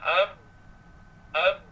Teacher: Contohnya huruf ba, ab di bibir saja, lidah tidak terangkat